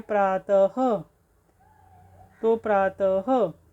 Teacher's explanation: विसर्ग का उच्चारण ह के साथ होता है